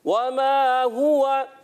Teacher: हा की अदायगी क्लियर और वाव की अदायगी भी होंठों की गोलाई से